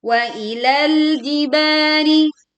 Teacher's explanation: Ujung lidah bagian waal menahan sebagian suara. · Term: lam sukun